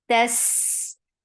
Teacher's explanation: open your jaws for fatha of ta, and ta is very sharp, but seen will get rakhawa.